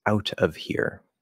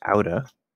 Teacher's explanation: we're dropping the v on of